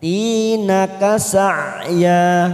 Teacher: ain sukun baru kita membacanya agak sedikit ke dalam. Tinaka sa'ya, ya 2 harokat kita panjangkan, tidak boleh lebih tidak boleh kurang. · ini mat iwad 2 ketuk wajib 2 harokat, tidak boleh kurang tidak boleh lebih